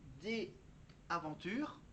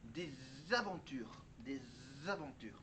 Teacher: des aventures, il faut le lier avec la prononciation Z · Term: liaison